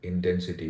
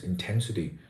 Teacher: intensity is stressed on the second syllable ten